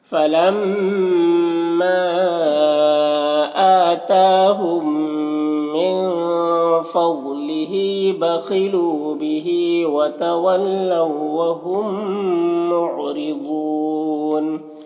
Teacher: ضاد حروف مستعلیہ میں سے پر پڑھیں گے